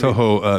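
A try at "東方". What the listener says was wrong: It's longer in Japanese. It's a single or a doubled vowel instead of a single.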